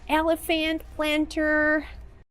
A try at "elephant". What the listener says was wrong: And pronunciation, we don't say elephant planter. It's elephant. The last syllable is not stressed. We do not say elephant. It's elephant. Elephant.